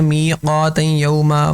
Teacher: نون تنوین کے بعد یہاں پر یا آ رہی ہے تو ادغام ہو رہا ہے, غنہ بھی ہو رہا ہے